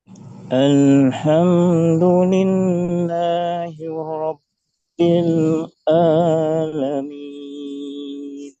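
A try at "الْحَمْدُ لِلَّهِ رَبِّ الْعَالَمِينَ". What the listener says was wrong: Baik, kalau bisa tidak putus antara Rabbil tidak harus ada jeda yang lama di situ ya, tidak boleh ada jeda. Alhamdulillahi Rabbil Alamin.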